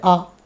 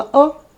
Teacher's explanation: जैसे हमने बोला अ कम समय लगा दीर्घ स्वर है जैसे आ तो आ अ से ज्यादा डबल डबल समय लगा